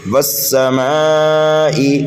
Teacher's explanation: واو کو ہم سین میں ملائیں گے اس لیے کہ سین مشدد ہے اور سین کو 2 مرتبہ پڑھیں گے، دوسری مرتبہ جلدی پڑھیں گے اس لیے کہ دوسرا سین متحرک ہے۔